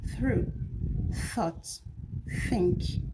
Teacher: Talking about the place of articulation, th is a dental sound. That is um it is produced with um the upper teeth and lower teeth with the tongue the tip of the tongue in between. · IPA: /θ/